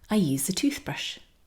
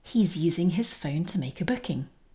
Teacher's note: This is a verb, and we're using the z sound in use.